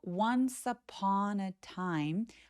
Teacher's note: 그리고 요렇게 덩어리진 표현은 계단식으로 once upon a time 하면서 조금씩 톤을 떨어뜨리면서 얘기하시면 자연스럽습니다. 쉬어가기에서는 once upon a time 하면서 내려갔다가 살짝 올라가는 느낌으로 소리 내 주시고요.